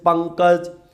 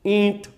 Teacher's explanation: अनुस्वार में नाक में हवा नहीं जाएगी चंद्र बिंदु में नाक में हवा जाएगी जैसे पंकज ईंट जैसे हमने ईंट बोला तो नाक में हल्का